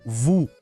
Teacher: onde o O tem som de U e o S não se fala